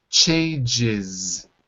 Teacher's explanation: Changes with the extra syllable and the Z.